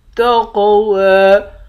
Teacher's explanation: قاف کو موٹا بھی پڑھیں گے، قلقلہ بھی کریں گے۔ واو کے اوپر کھڑا زبر ہے، اس کو 1 الف کے برابر کھینچ کر پڑھیں گے۔